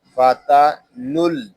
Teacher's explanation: یہاں نون کو ہم لام کے ساتھ ملا کر پڑھیں گے. فاتا نل.